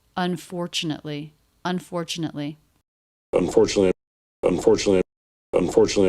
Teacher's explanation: this T do you notice it's pronounced as a CH